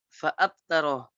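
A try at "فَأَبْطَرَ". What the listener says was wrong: Fa'abto, bukan tak. Fa'abtoro, to.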